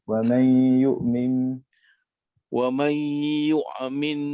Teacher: kita dengar sikit nun nanti bertemu ya. Hukum dia idgham bigunah.